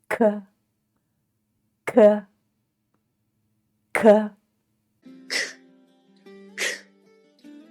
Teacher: we need to force the air out and this sound is aspirated just as in the English word kite · the back of the tongue is raised against the soft pallet